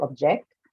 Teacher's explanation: So say a word like object, right? So when I have to use it as a verb, then as per the rule, your stress goes on to the second syllable because it's used as a verb. So object. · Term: functional stress